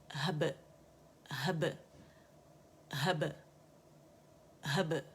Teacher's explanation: बै कलकला जो बारीक है और बड़ी खूबसूरत बबल की सी आवाज़ आनी चाहिए, दोनों होंठ आपस में गिले से मिलेंगे, ठीक है। वहब मिल के जुदा हो जाएंगे, हब हब हब हब, ठीक है।